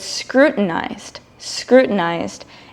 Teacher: When I said the word scrutinized a little bit faster, I did not say the letter T very clearly. I said scrutinized.